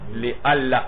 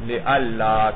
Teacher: نیز مولانا رسم الخط بھی خاص ہو جائے گا، یہ دیکھ رہے ہیں آپ رسم الخط بھی کیا ہے لِأَلَّا، اسی طرح ملا کر لکھا جائے گا مولانا، حمزہ کو دندانے پر لکھا جائے گا اور اس کو ملایا جائے گا لا کے ساتھ، اور وہ جو نون تھا وہ لام بن کر لام میں ادغام ہوا، اس کا کیا بن گیا لِأَلَّا، کیونکہ نون اور لام کا مخرج قریب ہے مولانا۔